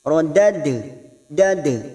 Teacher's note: Ini juga huruf qalqalah tetapi bukan huruf isti'la, huruf dal, huruf tipis. Rodad dada kita pantulkan, namanya qalqalah sugro karena mati asli di tengah kalimat.